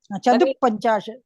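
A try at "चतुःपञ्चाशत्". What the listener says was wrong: Koncham slow pannungo. Slow down a little bit. You're saying Chaduhu. It is not Chaduhu. It is Chatuhu Panchashat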